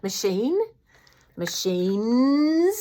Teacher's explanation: that mm at the end carries over that voicing onto the plural s and it becomes machines.